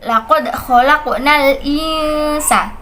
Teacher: Nun sukun bertemu dengan huruf sin, maka harus dibaca dengan ikhfa, yaitu samar.